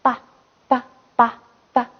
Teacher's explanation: 那么第4组全部它的发音部位就是唇，也就是双唇音